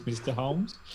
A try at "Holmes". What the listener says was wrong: Why are you pronouncing it Holmes with an L? It's doing my head in.